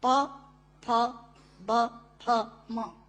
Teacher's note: दोनों होंठ मिलाकर बोले जा सकते हैं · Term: ओष्ठांग